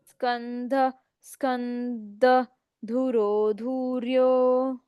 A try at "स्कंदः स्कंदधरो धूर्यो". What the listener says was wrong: धुरो कहाँ है? ध है, उसके साथ कोई मात्रा नहीं है। धुरो पढ़ रहे हो आप, धरो।